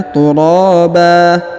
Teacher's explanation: huruf ban berharokat an berubah menjadi ba atau fathah atau a karena sudah berada di ujung ayat atau di ujung bacaan kita ya.